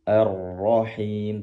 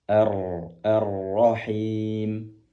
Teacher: Rnya perlu diangkat kembali pangkal lidahnya. Arrahim tanpa menggerakkan bibir.